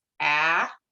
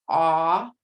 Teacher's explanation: General American English has a made with the tongue low in front and ah with tongue low in back